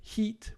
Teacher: heat is longer but it's also different in its quality